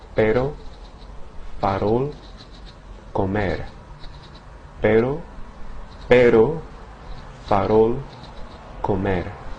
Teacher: the tip of the tongue strikes the ridge behind the top teeth in a single flapping motion. So it sounds like pero, farol, comer. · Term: single R